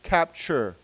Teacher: the t has a ch sound